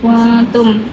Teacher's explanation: Kuntum ikhfa juga karena nun sukun bertemu dengan huruf ta, dibacanya samar.